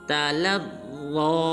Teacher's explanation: लाम को ज़ा मुशद्दद के साथ मिलाएंगे और ज़ा को पुर अदा करेंगे